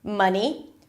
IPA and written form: ˈmʌni (money)